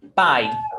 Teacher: Então, pai é um ditongo. Nós temos a vogal A e a semivogal I. A é mais forte, is stronger than I. Então, é um ditongo decrescente.